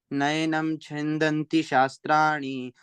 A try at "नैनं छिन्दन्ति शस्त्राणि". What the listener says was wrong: नयनम नहीं है बच्चे, नय कहाँ है? नैनम, नैनम